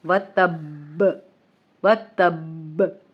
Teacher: آپ نے با پہ تھوڑی دیر رکنا ہے اور اس کا قلقلہ بھی کرنا ہے